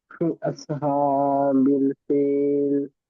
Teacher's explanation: খাড়া জবর আছে, একালি টান দিয়ে পড়বো